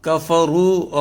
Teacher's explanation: را جو ہے یہ پر ہے چونکہ اس کے اوپر پیش ہے